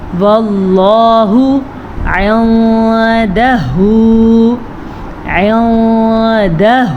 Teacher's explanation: واللہ عندہ، عندہ، یہاں پہ ہو گیا اخفا. نون ساکن کے بعد دال آیا ہوا ہے جو کہ حروف اخفا میں سے ہے، تو ہم نون ساکن کو چھپا کے پڑھیں گے لیکن غنّے کے ساتھ پڑھیں گے